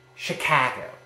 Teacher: an amphibrack so unstressed stressed unstressed